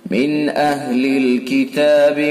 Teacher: کفروا را کو پر کریں گے، من اہلی نون ساکن کے بعد حمزہ ہے تو اظہار حلقی ہوگا، یہ والا اظہار حلقی، اس کے اندر غنہ نہیں ہوتا، جلدی سے اپنے مخرج سے پڑھا جاتا ہے